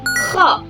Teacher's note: K agak geter ya di bagian tenggorokan, pangkal tenggorokan sini.